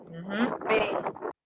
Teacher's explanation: Con los labios, B. Con los dos labios. Y por eso decimos que es bilabial.